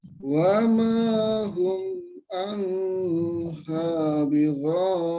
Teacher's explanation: Wa ma hum anha bighaibin. Nun sukun bertemu ha langsung saja, jangan ditahan agak lama, jangan anha.